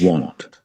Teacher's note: want in British English with a short o sound, but in American English, Want.